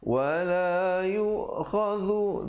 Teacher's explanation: Wala yu'khadhu, dhu di hujung lidah.